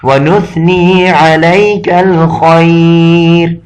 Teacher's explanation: خا یہ بھی حروف مستعلیہ میں سے آ گیا تو اس وجہ سے یہ بھی موٹا تفخیم کر کے پڑھا جاتا ہے